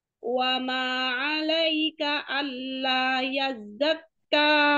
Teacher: Kanya kepanjangan dua harakat saja